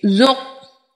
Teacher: قاف حرف قلقلہ ہے، حرف مستعلیہ ہے، قلقلہ ہونے کی وجہ سے خوب اچھے سے قلقلہ ظاہر کریں گے، اور حرف مستعلیہ ہے۔